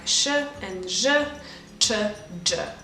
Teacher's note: These are sounds that are a bit further back behind your alveolar ridge, but it's still not the hard palate, which is where the tongue is settled basically. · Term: postalveolar